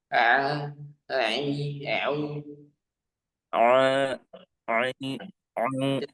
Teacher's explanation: Terasa sedikit di hidung ya. Coba ditutup hidungnya. Nah, masih terasa suara hidungnya.